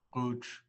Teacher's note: you're almost trying to swallow that G sound. You say it in the back of your throat.